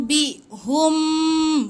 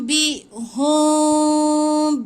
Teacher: Itu rapat sangat. Jangan rapatkan bibir tu hum. Tapi macam nak sebut mim tapi renggangkan sikit, lepas tu tahan 2 harakat.